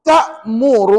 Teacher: Wajibul ghunnah. Dengung 2 harakat.